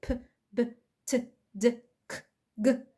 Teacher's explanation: الهواء بيخرج كده بشكل انفجاري زي ب، ب، ت، د، ك، ج. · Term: plosives